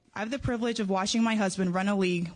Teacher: You can hear her a little breathy, a little nervous.